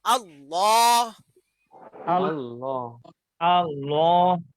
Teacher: আল্লাহ শব্দের লামের বৈশিষ্ট্য হলো এই লামটাকে উচ্চারণ করতে হবে মোটা করে। হ্যাঁ, মুখ ভরে মোটা করে উচ্চারণ করতে হবে। দুনিয়ার সকল লাম পাতলা উচ্চারণ হবে, শুধু আল্লাহর নামের লামটা মোটা উচ্চারণ হবে, তার গাম্ভীর্য বোঝানোর জন্য।